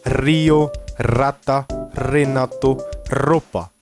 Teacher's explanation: Tá? Então sempre que tiver um R no começo, ele tem um som bem vibrado.